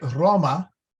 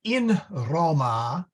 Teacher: So, for example, in feminine, you say Roma, but you say in Roma with a long A